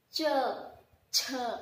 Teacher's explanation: तालु से उच्चारण किया जाता है